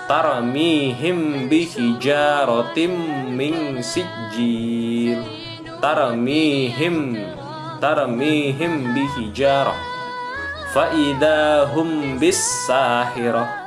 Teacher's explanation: Ya, itu contoh bacaan ikhfa syafawi. Ketika mim mati bertemu dengan huruf ba, maka mimnya, m-nya dibaca dengan samar, dibaca dengan ikhfa. · Nah, berbeda kalau mimnya itu jelas izhar, maka kita tebalkan. Tetapi karena ini ikhfa itu artinya samar, maka mimnya kita samarkan. Jangan kita baca dengan jelas.